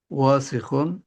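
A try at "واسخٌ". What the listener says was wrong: ওয়া টান হবে না, ওয়া টান হবে না, ওয়াসিখুন।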